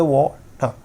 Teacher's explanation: आर छोटा है मतलब हम इसको बहुत स्लो साउंड, मतलब धीरे खत्म होते होते वाटर, आर का बहुत ही कम साउंड आएगा